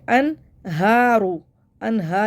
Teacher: یہ ہا نہیں پڑھنا ہے، ہا سینے سے نکالنا ہے